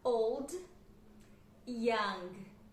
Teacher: Old, lembrando que não é o com som de u, não, é som do l mesmo